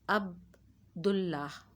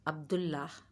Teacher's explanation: اب ہم نے عبد کے دال کو اسلام سے جوڑ کر پڑھنا ہے۔ عبد اللہ، الف اور لام ان دونوں کی آواز نہیں آئے گی